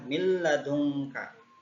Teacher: hukum idgham bila gunnah. Artinya memasukkan tanpa mendengung. Hurufnya itu ada 2, yaitu lam dan ro.